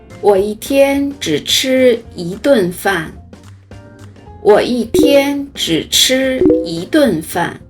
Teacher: 大家好，欢迎来到今天的中文课。我们先来看这样几个句子：我一天只吃一顿饭。我一天只吃一顿饭。在这句话中有两处使用了数词一。我们知道一在汉语口语中会发生变调。什么叫变调呢？就是一的标准读音是一声，读作一，但是像这句话中， 它分别变成了第四声一天和第二声一顿